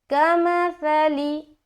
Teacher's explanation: सा को नरमी के साथ बगैर सीटी के अदा कर रहे हैं